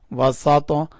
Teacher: طا کو اٹھائیں گے، یعنی طا کے اوپر کلکلہ کریں گے